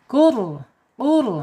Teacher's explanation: qaf secara makhraj ada di pangkal lidah ya, terangkat yang menyentuh anak-anak lidah. · Ro-nya dibaca tebal ya, Kenapa? Karena sebelum ro sukunnya harokatnya domah.